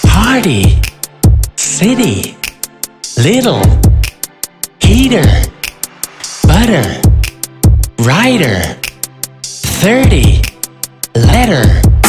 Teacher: the letter T sounds like d in American English it's a flat T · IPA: /d/